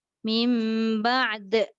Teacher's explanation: dia tak boleh berhenti ain saja, dia kena bunyi dal kuat